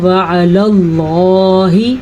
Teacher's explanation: اللہ کا نام پر پڑھا کیونکہ اللہ کے نام سے پہلے زبر ہے